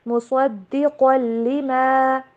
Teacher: صاد اور قاف دونوں کو موٹا کر کے پڑھیں گے